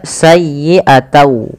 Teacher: Awalnya bunyi sayyi'atan dengan huruf nun yang diakhirkan, karena dia bertemu dengan waw, huruf n-nya itu diganti dengan waw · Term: idgham